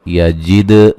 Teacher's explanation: دال کو ہلا کے پڑھنا ہے